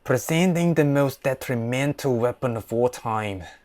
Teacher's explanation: the Scottish accent with the tap R sound